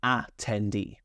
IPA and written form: ætɛnˈdiː (attendee)